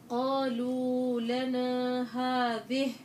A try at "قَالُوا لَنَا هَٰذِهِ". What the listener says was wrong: انتبهي، قالوا عندك بتمديها زيادة، بدي مد طبيعي أنا.